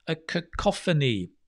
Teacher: put the stress on the co like cough it's the same sound right cough a cacophony of sounds is